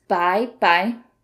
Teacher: the second by is kind of softer without much emphasis